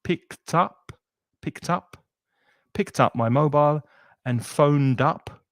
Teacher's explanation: Whenever you have a consonant followed by a vowel, there's a linking that goes on and they connect and it sounds like one word